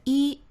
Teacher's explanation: Let's look at the tone change of 一的变音变调。When 一 stand alone, it should pronounce as 一 the first tone.